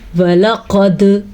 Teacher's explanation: اب دال پہ جھٹکا دیا، اس کا مطلب یہاں پہ ہم نے قلقلہ ادا کیا ہے۔